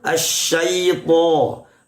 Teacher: Asyaitoni, huruf to tebal, tidak begini to, tidak. Tebalnya huruf to tidak sampai memonyongkan atau memoncongkan kedua bibir kita, sama seperti biasanya asyaito, seperti itu ya.